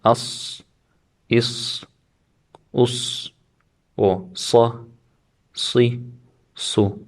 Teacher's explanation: due to the back part of the tongue rising, it causes these letters to be pronounced with a thick sound, tafkhim.